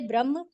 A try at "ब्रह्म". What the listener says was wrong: नहीं है, एक मिनट, ये ब्रह्मा नहीं है, ये ब्रह्म है। मात्रा नहीं है, ब्रह्म।